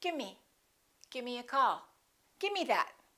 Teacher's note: instead of the V they just drop the V